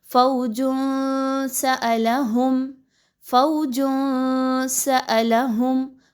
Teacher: نون کی آواز کو کلیئر نہیں پڑھنا، تھوڑا سا آواز کو ناک میں لے کر جانا ہے، لیکن یاد رکھیے اپنی زبان کو منہ کے خالی حصے میں سیدھا رکھنا ہے، کسی جگہ کے ساتھ نہ ملانا ہے اور نہ ہی کوئی موومنٹ کروانی ہے تو اخفا ادا ہوگا.